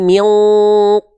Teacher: dengungannya tebal karena ketemu sama qof maka sambil bersiap-siap melafalkan qof tebalkan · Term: ikhfa